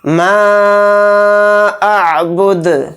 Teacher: اعبد، دال کو ساکن کر کے پڑھیں گے کیونکہ یہاں پر آیت ہو رہی ہے حالت وقف میں دال ساکن ہوگا، اور دال یہاں پر ساکن ہوگا تو دال میں قلقلہ بھی ہوگا